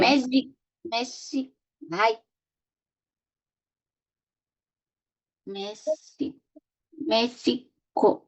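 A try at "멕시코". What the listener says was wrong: Está súper bien. Aquí solo faltó la G, que viste que como está aquí de Batsim suena como una K,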